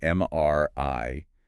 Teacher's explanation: The voice sort of goes up slightly at the end.